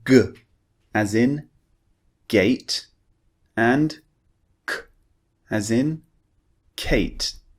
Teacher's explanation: we use the back of our tongue, actually, way back. So what we do is we push the back of our tongue up, we block the air, and then we release. We push the tongue down to produce the sound.